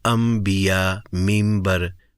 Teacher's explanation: نون کو میم میں بدل کے پڑھنا، اس کو اقلاب کا قاعدہ کہتے ہیں۔